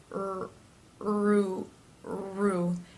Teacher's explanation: the tongue is up and pressed in the middle against the insides of the teeth for the are sound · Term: R consonant sound